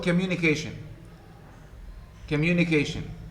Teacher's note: the second syllable has also a stress but secondary less strong at the second level mu communication immunication immunication communication so the mu is stressed and